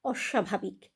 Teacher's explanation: ব ফলার উচ্চারণ আমরা করছি না কিন্তু কিন্তু কি করছি অস্বাভাবিক স এর নিচে যে বফলাটা আছে সেটাকে আমরা দুটো স হিসেবে উচ্চারণ করছি প্রথমে বলছি তালেব স্বয় হসন্ত তারপরে তালেব্য স্বয় আকার অস্বাভাবিক প্রশ্বাস